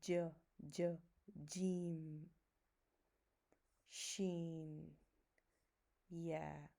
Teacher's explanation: So a little bit more distance between my tongue and hard palate. So when we touch the middle of the tongue on the middle of the palate, then we say Jeem, Sheen, Yeah.